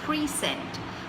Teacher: You're stressing on the second part of it, which is sent.